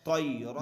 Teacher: تنوین کی آواز کو ظاہر کر کے بلا غنہ کے جلد پڑھیں گے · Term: اظہار